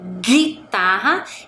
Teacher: quando eu falo a palavra guitarra, eu não escuto o som da vogal U que está ali ao lado da letra G